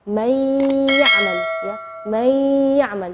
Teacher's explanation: Nunnya tidak jelas tapi ada suara dengung gunnahnya. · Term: idgham bi gunnah